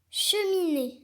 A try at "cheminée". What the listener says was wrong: Non, c'est pas chemin et, c'est cheminée. Attention, quand on a une voyelle après le N, souvent il faut prononcer in et pas un.